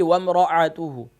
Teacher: حمزہ bottom of throat سے ادا ہوتا ہے، یعنی کہ گلے کے نیچے والے حصے سے، اقصی حلق سے، اور عین جو ہے یہ میڈل آف تھروٹ گلے کے درمیان سے ادا ہوتا ہے۔